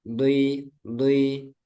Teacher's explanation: dui ketika kasroh itu berubah ke di, ke dal, ke tipis. Harusnya tetap dui, dui.